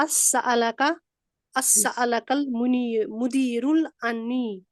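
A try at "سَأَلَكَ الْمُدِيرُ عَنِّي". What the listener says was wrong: मुदीरुल नहीं है, मुदीरू अनी।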